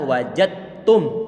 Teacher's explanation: Huruf dal dia dalam kondisi sukun bertemu dengan huruf ta. Huruf dal langsung didhamkan pada huruf ta-nya menjadi satu huruf ta dalam keadaan tasydid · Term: idgham kamil